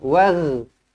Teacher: bukan huruf ain, huruf ghin, wagh, ada getaran